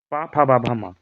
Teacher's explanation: पा फा बा भा मा जो है वो ओष्ठ से होता है।